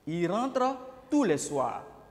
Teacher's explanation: Ici, on n'a pas prononcé le S de tout parce que c'est un adjectif indéfini.